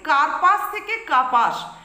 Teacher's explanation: র ব্যঞ্জন ধ্বনিটা শব্দের মধ্যবর্তী স্থান থেকে লোপ পায় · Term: র লোপ